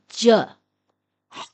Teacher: جیم پچھلی داڑوں کو ملانے سے ادا ہوتا ہے اور اس کی آواز ہے ج۔